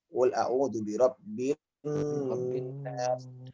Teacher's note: Ini lebih ditahan Pak ya, di nun yang ada tasydidnya itu.